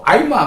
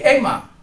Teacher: kalau sudah A dan I menjadi E